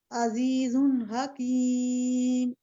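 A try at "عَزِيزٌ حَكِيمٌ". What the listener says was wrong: ठीक है, शाबाश, बारकल्लाह।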